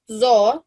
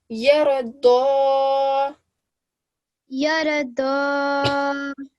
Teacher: It's one of our thick letters. So, and we give this a thick dal sound.